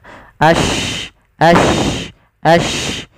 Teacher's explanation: Shin itu kan salah satu sifatnya tafashi, intisarus sauti fil fam, yaitu adanya menyebarnya suara kita di mulut banyak.